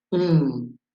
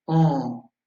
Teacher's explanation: Pour faire la différence entre ces deux voyelles nasales, on et en, il faut savoir que pour on, les lèvres sont arrondies, on, et les muscles sont tendus. Alors que pour en, les muscles sont relâchés et les mâchoires aussi vont tomber en.